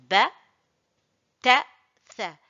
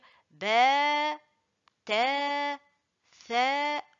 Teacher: alif voyelle longue qui prolonge la lettre. Donc, il faut prolonger la lettre deux temps. Par exemple, ici, il ne faut pas dire ba, ta, tha. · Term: prolonger deux temps